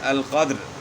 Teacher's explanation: را بھی ساکن ہو گئی اور اس سے پہلے دال بھی ساکن ہو گیا، اور اس سے پہلے والا حرف پر قاف پر زبر ہے، تو ان صورتوں میں جو ہے را جو ہے وہ موٹی پڑی جائے گی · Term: را موٹی